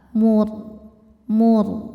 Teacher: huruf ra sukun dibunyikan secara tafkhim sebab harokat sebelumnya dhammah. Cara membacanya ra dibaca tebal, mur, pangkal lidah angkat.